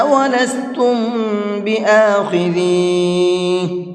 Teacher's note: وَلَسْتُمْ، یہاں پر بھی غنہ کریں گے، کیونکہ یہاں پر میم ساکن کے بعد میں با ہے، اور میم ساکن کے بعد میں با آتا ہے تو وہاں پر بھی غنہ کرتے ہیں